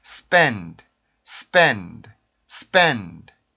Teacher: 유성음들에서는 성대 울림이 빠지게 되겠죠. 그러면은 공기를 아주 약하게 성대 울림을 빼버린 순수한 공기만 이용해서 이렇게 종성의 소리를 내주시면 돼요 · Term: D 발음